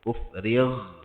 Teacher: Mana ghin ni adalah pada permulaan kerongkong. Permulaan kerongkong ni adalah tempat keluar masuk angin, di mana sebutan huruf yang keluar daripada situ mesti ada getaran angin.